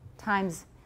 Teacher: it's z with voicelessness at the end